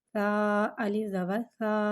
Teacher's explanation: الف سے پہلے زبر آ رہا ہے، الف مدہ ہو رہا ہے، لہذا الف مدہ کو ایک الف یعنی 2 حرکات کے برابر کھینچ کے پڑھیں گے